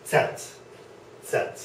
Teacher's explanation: it's like I'm going to set something down but there's a slight T sound in front of it so I'll put T in front of Set set set okay